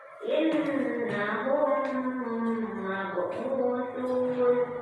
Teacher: Mim mati bertemu dengan mim, membacanya harus dengung. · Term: idgham mutamathilan